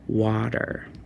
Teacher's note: that T kind of spells the D sound sometimes as well, depending on where you are